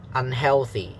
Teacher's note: so the second syllable has a higher pitch.